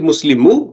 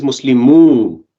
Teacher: when you have two oos coming together it becomes longer